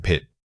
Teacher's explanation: It must be a sharp immediate release from your lips. The shortness of the sound gives it an abrupt quality. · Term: initial puff of air